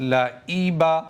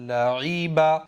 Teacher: حمزہ کی آواز یہاں پر نہیں آنی چاہیے، عین کی آواز ہی آنی چاہیے، کیونکہ یہاں پر عین ہے۔